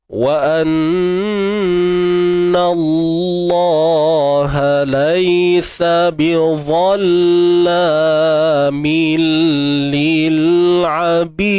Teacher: Huruf dal lantunan, qalqalah kubra. · Wa anna Allah laisa bidhalla. Ingat dha tebal tuan-puan Jangan malu-malu nak sebut tu. Tebalkan je.